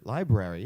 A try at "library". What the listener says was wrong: Well, there's an R in there that you were missing. You're saying the second R.